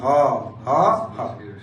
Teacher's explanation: ফুসফুস থেকে ভিতর দিয়ে একটা ধ্বনি উৎপাদন হয়, এটাকে বলে কণ্ঠ নালীয় ধ্বনি